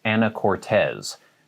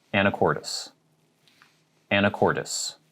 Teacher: so the end is a tis not a tes